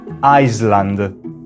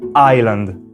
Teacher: si rende conto che la pronuncia non contiene la S e, con un po' di pratica, riesce finalmente a pronunciare Island.